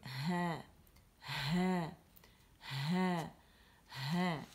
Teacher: جب ہم ہا ساکن کرتے ہیں تو آواز پھنستے ہوئے گزرتی ہے، کیونکہ اس میں آواز کے پٹھے ایک دوسرے کے قریب آ جاتے ہیں اور ان میں ارتعاش یعنی وائبریشن پیدا ہو جاتی ہے، اور ہوا گزرنے کی وجہ سے ہم اس کی ادائیگی جو ہے وہ کیسے ہوگی؟